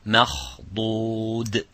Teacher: So the mim has to remain empty mouth, but the kha and the dad is full mouth.